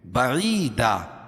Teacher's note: یا ساکن سے پہلے زیر ہو تو یا مدہ اس کو ایک الف کے برابر کھینچ کے پڑھیں گے